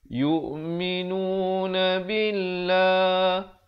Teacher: Di sini dibacakan dengan nipis lafaz jalalahnya 2 harakat.